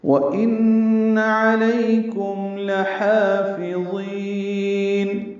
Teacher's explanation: واو ہونٹوں کی نا تمام گلائی سے، ان میں نون مشدد پہ غنہ ہے. علیکم معروف طریقے سے پڑھنا ہے، علیکم نہیں پڑھنا، میم ساکن پہ اظہار.